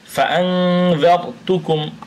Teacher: তো এই জন্য নুন সাকিনের পরে একফার 15 হরফের যে কোনো একটি আসার কারণে আমরা উক্ত নুন সাকিন বা তানভিনকে গুন্নাহ সহ আমরা নাকের ভিতর লুকিয়ে পড়ছি